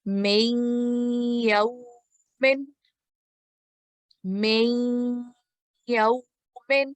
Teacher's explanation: when I'm merging Maksur meme with Mushaddad Ya, nasal sound is producing in between for 2 seconds. That is idgham naqis. · we're going to produce nasal sound of 2 seconds while merging Maksur meme with Mushaddad Ya